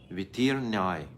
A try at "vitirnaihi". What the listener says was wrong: Vitirnaihi, yes, with an H.